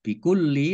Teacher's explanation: lamnya dibaca double, ada tasdidnya